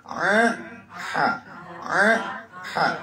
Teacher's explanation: kita naik ke tengah ke bagian tengah leher kita itu keluar dua huruf Ain dan H